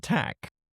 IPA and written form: tæk (TALK)